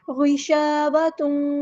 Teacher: تنوین کی آواز کو واؤ میں مدغم کر دینا ہے، مکس اپ کر دینا ہے. غشاوہ تم، ادغام مع الغنہ ہو رہا ہے یہاں پر، اور ادغام جو ہے وہ ناقص ہو رہا ہے.